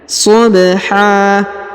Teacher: Huruf ba berharokat sukun, maka kita pantulkan atau kita qalqalahkan ya.